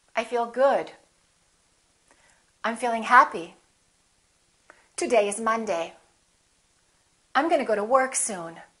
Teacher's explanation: making sure that your voice goes down at the end that your pitch goes down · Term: falling intonation